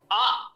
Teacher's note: जब हम बड़े होकर के उसको सही रूप में समझना चाहें, देखिए आ, इसका उच्चारण स्थान कंठ है। आप आ बोलने का प्रयास कीजिए तो कहीं ना कहीं आपको कंठ से वायु की रगड़ अनुभव होगी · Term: कंठ स्थानीय